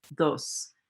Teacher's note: not a clear d sound. It's much softer and gentler